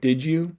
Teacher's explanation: So like, a phrase like did you, the D at the end of did, it becomes more palatalized, it becomes an affricate right before the ya. There's sort of, basically assimilation happening across the word boundary there.